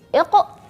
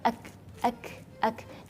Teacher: Perhatikan sahabat Quran ketika huruf qaf sukun dan huruf kaf sukun, iqra dan akram. Jadi ketika melafalkan huruf qaf yang sukun ada suara qalqalah. Tapi sedangkan ketika melafalkan huruf kaf yang sukun itu ada hams